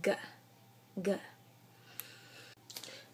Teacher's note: G is gonna be your voice velar plosive. When you make g, you're gonna put a little bit more emphasis and like voice basically to what you're saying when you say k, or what you're making when you say k.